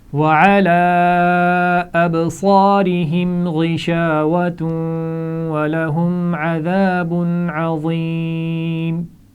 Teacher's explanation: ابصارہم با پر قلقلہ تھا، آپ نے بالکل ٹھیک کیا. اسی طرح غشاوۃ ولہم، یہاں پر غنہ بھی ہوگا اور ملا کر بھی پڑھیں گے واو کو